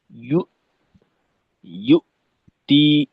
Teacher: হামজার মাখরাজে শক্তভাবে আটকাইতে হবে, এখানে যেন শিথিলতা না থাকে। হামজা হলো একটা শক্ত উচ্চারণ।